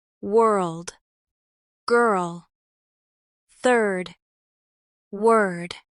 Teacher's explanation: They require keeping the R sound without over rounding it. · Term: R plus consonant combinations